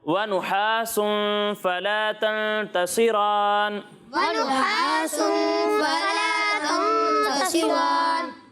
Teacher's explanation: यहाँ पर इख्फा हो रहा है तो यहाँ गुन्ना करना है